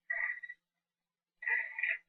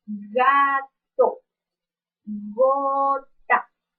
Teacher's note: oclusivo y en su punto de articulación es del Porque e la parte posterior de la lengua está haciendo contacto con el velo del paladar por lo tanto el sonido que hace este fonema es el